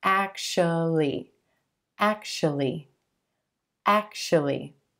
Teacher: And that second syllable is going to be a schwa, sh, sh. Actually, actually, actually.